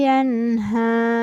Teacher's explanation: pada huruf h tebal maka kita akan merasakan getaran pada tenggorokan ketika menyebutkannya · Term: Ha Tebal